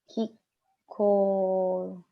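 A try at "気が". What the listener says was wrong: Not ki, but ke, isn't it?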